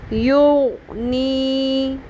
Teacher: لوگ غین پر قلقلہ کر لیتے ہیں، یغنی ایسے نہیں پڑھنا، غین کو فکس کریں